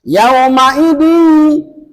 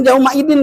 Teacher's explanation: Dimasukkan tanwinnya seolah-olah dari bacaan tidak ada dimasukkan kepada ia tambah dengan dengung. Maka namanya idam bighunah. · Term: idgham bigunah